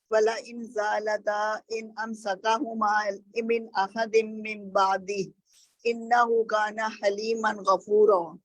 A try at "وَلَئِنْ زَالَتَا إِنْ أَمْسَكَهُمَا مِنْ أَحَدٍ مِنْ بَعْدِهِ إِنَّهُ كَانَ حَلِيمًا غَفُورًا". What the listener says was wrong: دوسرا یہ جب وہ پڑھے نا عربک پڑھے نا آیات پڑھیں تو مد ڈراپ نہ کریں، جو ہے نا ذالتا تھوڑا سا کھینچے نا، اور انہو تشدید کو تشدید کی طرح ادا کریں، ٹھیک ہے؟